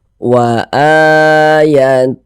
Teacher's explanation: ini baca panjang mad badal panjang dua harakat